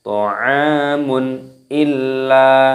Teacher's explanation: Ta'amun illa, dhammah tanwin bertemu dengan huruf hamzah dengan alif, ini hukumnya dibaca idhar halqi, dibaca jelas. Tidak boleh dibaca berdengung. Misalkan ta'amun illa, tidak boleh, harus jelas.